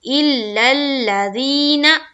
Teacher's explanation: دیکھیے ذین جو ہو رہا ہے، زی کو کھینچ رہے ایک الف کے باقدر اور نا کو نہیں کھینچ رہے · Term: یا مدہ